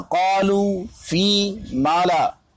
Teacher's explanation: دوسرے یہ کہ بعد حرف مدہ کے ہا یا حمزہ نہ زائد ہو جائے، مثلا قالو، فی، مالا، یہ تین مثالیں پیش کر دی گئی، واو یا الف تینوں کی۔ یہاں پہ جب وقف ہو قالو، واو پہ آواز رک جائے، فی یا پہ آواز رک جائے، اگر فی کو ہم نے بڑھا دیا تو گویا کہ دو تین حروف اور زائد ہو گئے۔